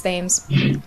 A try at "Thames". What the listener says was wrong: Tame. No, you don't say it. It's not. You don't pronounce the TH. It's T. It's a T. Thames. Thames. Thames.